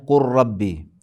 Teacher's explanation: لام کا را میں ادغام ہونا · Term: ادغام متقاربین